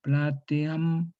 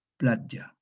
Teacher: pierde su carácter silábico la E, se cierra, transformándose este hiato en un diptongo. Y entonces, por ello, esta E se cierra en una semiconsonante, una yod.